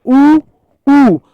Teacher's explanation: देखिए जब हमने ऊ की बात करी तो ऊ ऊ, जब हमने ऊ का उच्चारण किया तो हमारे होठ मूवमेंट किए, गति की, यानी गोला बनाया, इसलिए इन्हें हमने क्या कहा था, व्रतमुखी स्वर भी कहा था।